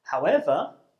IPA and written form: haʊˈevə (however)